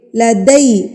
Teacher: دال زبر یا دئی ہوتا ہے نہ کہ دے